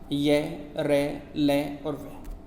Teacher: जिन व्यंजनों का उच्चारण स्वर और व्यंजनों के मध्य होता है उन्हें अंतस्थ व्यंजन कहते हैं।